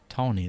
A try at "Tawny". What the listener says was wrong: Are you saying Tony or are you saying Tony? Yeah, that's tone. Like Dawn? It sounds like you're saying Tony.